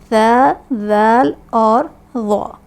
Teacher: زبان کا سرا جب اوپر کے دانتوں کے اندرونی کنارے سے لگتا ہے تب ہمارے یہ 3 حروف ادا ہوتے ہیں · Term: حروف لثویہ